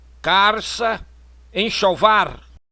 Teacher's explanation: E rotacização do L.